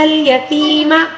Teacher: فَأَمَّا الْيَتِيمَ، اب یہاں پر یا مدہ ہے، یا ساکن سے پہلے والے حرف کے نیچے زیر ہے، اس کو یا مدہ کہا جاتا ہے، اس کو 1 الف کے برابر کھینچ کر پڑھنا ہوگا